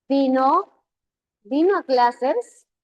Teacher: la entonación sube al final y suele presentarse en aquellas preguntas donde tu respuesta es un sí o no. Vino vino a clases mientras la respuesta se un sí o no es ascendente.